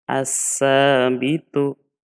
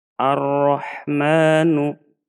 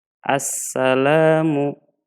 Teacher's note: cara membaca idgham Syamsiyah alif lam lamnya ini tidak terbaca